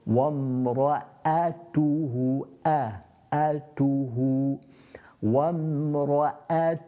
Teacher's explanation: Often a mistake that's made by people with that, not making the hamza clear, and the hamza is from the bottom of the throat.